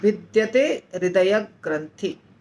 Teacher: ग्रंथि के बाद आधा श आ गया है वो हमको नहीं उच्चारण करना है, क्योंकि हम इसका विच्छेद कर रहे हैं